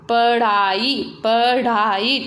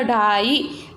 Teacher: जैसे अपन बोलते हैं पढ़ाई, पढ़ाई, तो ढ, जब आपने बोला ढाई तो वहाँ पर आप देखिए आपकी जीवा तालू को छूकर एकदम झटके से हटती है · जीवा की उल्टी हुई नोक जो होती है, हम जीवा को मोड़कर करते हैं, एकदम तालू से छूकर झटके से हट जाती है। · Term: उत्क्षिप्त व्यंजन